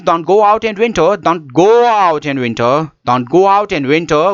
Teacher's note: Go is with a raised tone and winter is with the raised tone.